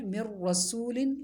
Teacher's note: ادغام تو ہوگا مگر غنہ نہیں ہوگا اس کو کہیں گے ادغام بلا غنہ